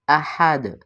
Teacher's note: زبان کا گول کنارہ اوپر والے دانتوں کی جڑوں کے اندرونی حصے سے لگے تو دال کی ادائیگی ہوتی ہے، احد۔ یہاں پہ دال جو ہے چونکہ حروف کلکلہ میں سے ہے اور آگے آیت آ رہی ہے وقت کی صورت میں، اس کو ہم کلکلہ کے ساتھ ادا کریں گے۔